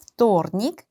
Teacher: V 알파벳으로 시작을 하지만 발음을 할 때는 F 발음을 하셔야 돼요. вторник. 조금 더 자세히 이제 원어민처럼 발음을 하겠다 하면은 마치 시작, 입모양의 시작은 V를 발음을 할 것처럼 위에 이빨과 밑에 입술을 붙였지만 내가 하는 발음은 вторник 라고 생각을 하시고 발음하시면 됩니다.